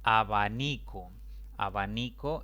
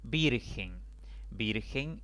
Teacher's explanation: abanico es una palabra de tres sílabas perdón de cuatro sílabas la mayor intensidad recae sobre la penúltima sílaba contando de izquierda a derecha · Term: palabra grave